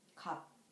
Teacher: The final consonant of 갑 is 비읍, 시옷, but we can only hear p sound.